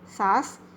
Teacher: इसके बोलने में कम समय लगता है और इसके उच्चारण में हवा नाक और मुंह दोनों से बाहर निकलती है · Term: अनुनासिक ध्वनि